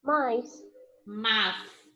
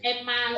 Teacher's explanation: Quando a gente fala esse mais, a gente pronuncia o i.